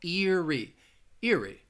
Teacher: Both of those vowels, you start with the long vowel sound in the first syllable, ear, and then it ends with that long E sound as well.